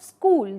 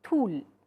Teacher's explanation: sound of S and Z gets replaced by the sound th.